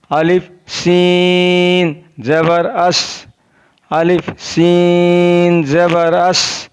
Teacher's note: सीन ज़बान की नोक और दोनों दांतों के अंदरूनी किनारे से अदा होता है। जब ज़बान की नोक को और दोनों दांतों के अंदरूनी किनारे से टच करेंगे तो वहाँ से सीन अदा होगा।